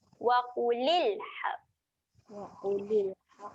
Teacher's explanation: Huruf lam dia ada tanda sukun. Jadi huruf lam ketika mati sifat dia kena tahan. Kita tahan bunyi lam mati.